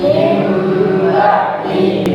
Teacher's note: bunyi suara nun sukun atau tanwin bunyinya berubah menjadi huruf mim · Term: iqlab